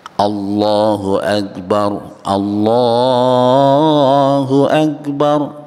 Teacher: lafzul jalalah yang dibaca tafkhim ataupun tebal